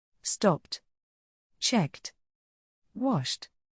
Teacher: Ed is pronounced T after unvoiced sounds